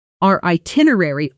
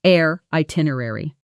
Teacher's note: In fast speech, our itinerary often blends into air itinerary. The two vowel sounds almost merging into one continuous glide.